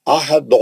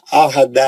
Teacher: دال مستعلیہ کا نہیں ہے، دال پتلا پڑ جاتا ہے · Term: پتلا دال